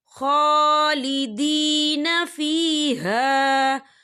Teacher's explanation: خا کے اوپر کھڑی حرکات ہے، تو ہم اسے 2 یا 3 حرکت کے برابر کھینچیں گے